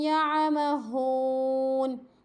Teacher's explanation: یہاں پہ او کی آواز نہیں آنی چاہیے، ہاں ہے تو ہو کی آواز آنی چاہیے